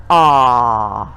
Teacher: the tongue doesn't move it's just relaxed in the mouth doesn't touch anything and to make the sound are you can feel the vibration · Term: R sound